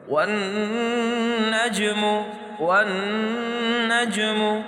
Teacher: جیم حروف قلقلہ میں سے ہے، حروف قلقلہ کا اصول یہ ہے کہ جب حروف قلقلہ ساکن حالت میں ہو تو اس کو جھٹکے سے پڑھتے ہیں